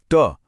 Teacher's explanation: महसूस कीजिए कि जीभ कैसे पीछे की तरफ कर्ल होती है। यही वो खास एक्शन है जो ट को त से बिल्कुल अलग बना देता है। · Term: मूर्धन्य ध्वनियां